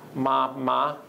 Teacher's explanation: If you speak Mandarin, that's a high tone, 2 high tones in a row.